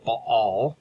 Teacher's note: it's a two syllable word with a glottal stop in the middle